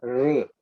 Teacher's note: R is the vowel where you keep the tongue up, and the tongue should not touch, but it should vibrate there.